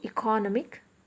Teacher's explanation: the stress is on the penultimate syllable